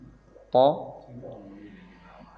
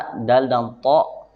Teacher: Jadi gigi itu punya pangkal, punya ujung. Nah, kalau huruf to, dal, dan ta ini dari torful lisan ke pangkal ujung gigi seri atas. Bukan gigi seri yang bawah, tapi gigi seri yang atas.